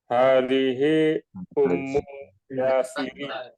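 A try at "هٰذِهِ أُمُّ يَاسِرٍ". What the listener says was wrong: Yasirin. Tanwin. Yasirin. Hadihi ummu Yasirin.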